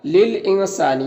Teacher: للانسان، یہاں پر نون ساکن کے بعد سین حروف اخفا میں سے ہے تو نون میں اخفا کریں گے، یعنی نون کی آواز کو ناک میں چھپا کر ایک الف کی مقدار کھینچ کر پڑھیں گے